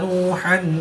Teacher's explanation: واو ساکن سے پہلے پیش ہے تو واو مدہ 1 الف یعنی 2 حرکات کے برابر کھینچ کر پڑھیں گے۔